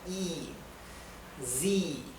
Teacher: la I con la E se pronuncia I, como una I más larga